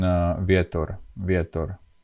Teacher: the beginning okay but it's not really W it's VOR so it's something in in between the V and W